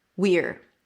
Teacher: it's a high e of the we and then you reduce it to an R.